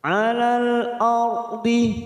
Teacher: ra sukun yang didahului fathah kita baca tafkhim.